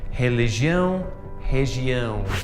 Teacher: that R at the start of the word is pronounced like an H. This happens with all R's at the start of the word.